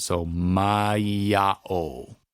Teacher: But because there's no okina between the end of the mai and the beginning of a-o, we say mai-a-o. So the e to the a actually again becomes kind of a ya sound.